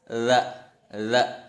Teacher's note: Nah, kata idza ini dal titik, artinya za. Pelafalannya bukan da, tapi za. Lidah ditempel di gigi seri atas. Za. Seolah-olah menyebutkan DLA.